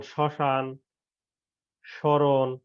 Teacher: পদের প্রথমে ম ফলা থাকলে সে বর্ণের উচ্চারণে কিছুটা পড়ে এবং সামান্য নাসিক্য স্বর হয়